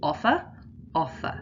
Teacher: the second syllable is unstressed the first syllable is stressed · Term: stressed syllables